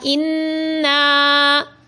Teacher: نون مشدد ہے تو اس میں غنہ کریں گے